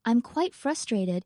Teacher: he emphasizes quite and frustrated to highlight his emotional state without raising his voice